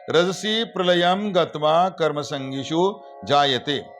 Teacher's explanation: पदच्छेद केल्यानंतर अनुस्वाराचा अनुनासिक होतोय, लक्षात घ्या.